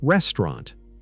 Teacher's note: Restaurant becomes restaurant. The middle sound gets shorter. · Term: dropped syllables